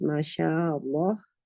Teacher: In light lam, the back of the tongue is not raised. Okay, in heavy lam, the back of the tongue is raised. Okay, but keep in mind there is a dip in the middle of the tongue.